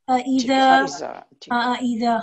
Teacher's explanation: हमजा को जरा हमने आराम से पढ़ना है आइन की आवाज ना महसूस हो हमजा की आवाज हो